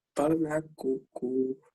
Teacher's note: ela é uma palavra oxítona. Então eu já sei que a última sílaba é a sílaba mais forte.